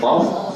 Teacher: Tapi dia enggak dikatakan di lisan keluarnya di K dan G. Tapi keluarnya di tenggorokan tapi dibantu dengan akar akar lidah. Dibantu dengan akar dan qo di sini rapat sehingga dia rapat jangan sampai q kayak ada hamesnya gitu ya.